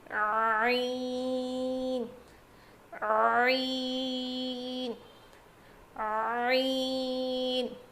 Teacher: حلق کے بیچ والے حصے سے ادا ہوتا ہے